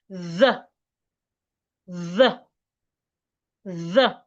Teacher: Just as the voiceless TH is pronounced, put your tongue in between your teeth, but this time make sure you feel vibration on your vocal cord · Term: voiced TH